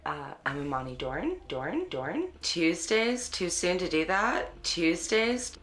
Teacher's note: African Americans in California participate in local features such as ooh fronting and up talk